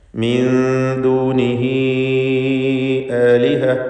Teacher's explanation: മദ് മുൻഫസിൽ ജായിസിൻ്റെ അതേ വിധിയാണ് അതിനുണ്ടാവുക. 4-5 ഹറക്കത്തിൻ്റെ അളവിൽ ഹ ഉദ്മീറിനെ ദീർഘിപ്പിക്കേണ്ടതാണ്.